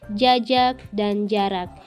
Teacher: huruf j yang bercirikan hidup oral laminopalatal dan afrikatif